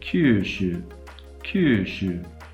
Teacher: The Japanese vowel doesn't have lip rounding.